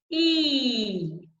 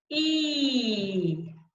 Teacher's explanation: If we were to think about where the blades of our tongue are, we put them on our top molars. Side blades of our tongue. Tip of the tongue is down behind our teeth, and we get E. Try that. E.